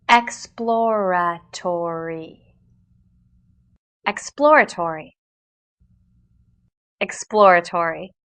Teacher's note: P sound immediately followed by L and R sounds